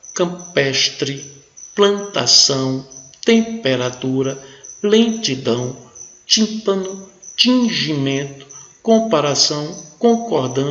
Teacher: o m e o n irão nasalizar a vogal